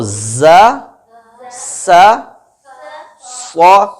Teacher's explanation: سو میں آواز بھاری ہے جس کی وجہ سے زبان کی جڑ اوپر تالو کی طرف اٹھتی ہے